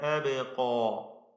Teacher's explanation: അബ്ഖാ എന്നതിലെ ഖാഫും അതിന്റെ അലിഫും രണ്ടും തഫ്ഖീം ചെയ്ത് ഉച്ചരിക്കണം. വ്യക്തമായി അതിന്റെ മഖ്റജിൽ നിന്ന് ഉച്ചരിക്കുക.